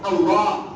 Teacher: ঠোট লাগে না উচ্চারণে ঠোটের কোন অক্ষর নাই